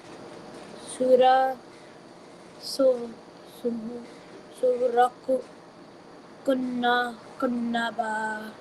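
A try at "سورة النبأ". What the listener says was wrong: Okay, this is not qaf, this is the round ta.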